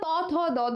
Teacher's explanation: আমাদের জীভের ডগা কিন্তু আমাদের দাঁতের পাটিতে এসে লাগতেছে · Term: দন্ত ব্যঞ্জন